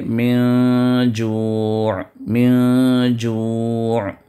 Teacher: نون کے ساؤنڈ کو ہم ناک سے چھپا کر ادا کریں گے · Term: اخفا